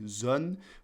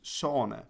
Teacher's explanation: This is where you have a French word like zon, which in Frisian becomes zone, because we don't have that voiced fricative at the start. The z becomes a s in Frisian. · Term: phonological adaptation